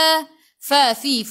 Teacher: gigi atas menyentuh perut bibir bawah